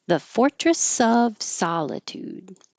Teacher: The vowel is ah, solitude, and you hold that final D.